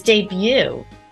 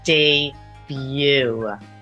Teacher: T is debut I made my debut on television last night that final T is also silent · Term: silent T